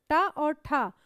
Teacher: ट और ठ कैसी ध्वनि होती है मूर्धन्य ध्वनि होती है